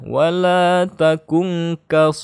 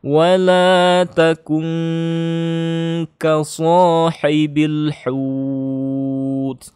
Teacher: Nun sukun bertemu kaf. Ini adalah ikhfa ya. Maka harus dengung ya.